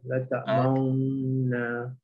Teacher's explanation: Dengung tu dua harakat, panjangkan sikit.